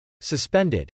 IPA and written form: səspˈɛndəd (suspended)